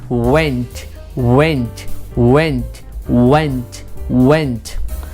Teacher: जब वी निकालते हैं तो एक जो हमारा नीचे वाला लिप्स है वो पीछे की तरफ घुस जाता है और अगला वाला ऊपर वाला दांत उस पर आके बैठ जाता है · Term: व साउंड